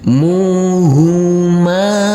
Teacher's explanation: Di sini adalah bacaan lain. Muhuma, huruf mim yang berfathah a ini kita baca panjang dengan panjang 2 harokat karena bertemu dengan huruf alif yang tidak berharokat